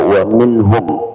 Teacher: Jadi pertama pada waminhum ya waminhum bukan waminhum tidak berdengung pada nunnya. Ini nun sukun bertemu dengan ha izhar ya. Jadi hanya dirapatkan saja kemudian pindah.